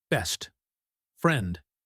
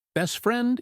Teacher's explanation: If I try to say best friend, I have to stop my airflow for the T.